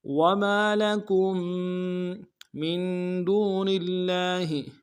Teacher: میم کو نون ساکن کے ساتھ ملانا ہے، نون ساکن میں غنہ کریں گے